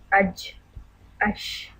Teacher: شین کی ادائیگی کے وقت وسط لسان تالو سے نہیں چپکتی بلکہ ان حروف کی آواز زبان اور تالو کے درمیانی حصے سے ہوا کے ساتھ نکل جاتی ہے · جیم کی ادائیگی کے وقت زبان اوپر کی طرف تالو سے چپک کر ہٹ جاتی ہے